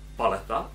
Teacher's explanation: to je slovo, které mělo přízvuk na první slabice. A třeba paleta, by bylo dobře, tam jsem úplně netrefil a udělal jsem tu poslední slabiku i delší, ale paleta, tak tam mám přízvuk.